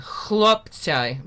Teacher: It's at the back of the throat, ch. But you have to add an L then. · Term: KH